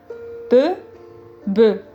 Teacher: bilabial, contact entre les deux lèvres.